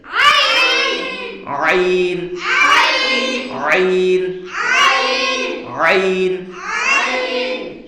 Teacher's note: চাপ দিয়ে গলার মাঝখানে থেকে উচ্চারণ করতে হবে।